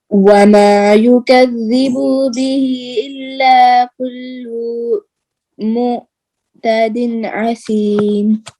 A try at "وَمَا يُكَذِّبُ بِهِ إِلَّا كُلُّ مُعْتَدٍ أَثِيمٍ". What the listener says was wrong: ایک تو یکذبو کی با کے اوپر جو پیش ہے اس کو لمبا نہیں کرنا.